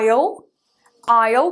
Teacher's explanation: que esse S fica mudo